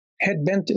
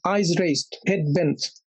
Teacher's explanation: Actually a spondy meaning a foot of two syllables but both of them stressed